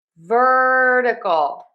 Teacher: technically this is a flap T in the syllable number two. However, I just spell it with my phonetic spelling as a D because the flap T is like a fast D sound.